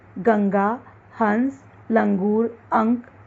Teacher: अनुस्वार, जिसका उच्चारण करते समय ध्वनि केवल नाक से निकलती है